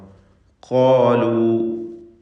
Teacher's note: ഖാഫിനും അതിൻ്റെ ദീർഘാക്ഷരമായ അലിഫിനും തഫ്ഖീം കൊടുക്കണം, പൂർണ്ണമായ തഫ്ഖീമാണ്. ഇസ്തിഅലാഇൻ്റെ ഹർഫാണ് ഖാഫ്, നല്ല കടുപ്പത്തിൽ ഉച്ചരിക്കേണ്ട അക്ഷരമാണ്.